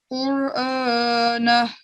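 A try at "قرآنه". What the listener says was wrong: اس کو الف کی جو ہے نا, الف کی آواز ساؤنڈ باریک ہو گئی. دوبارہ پڑھیں.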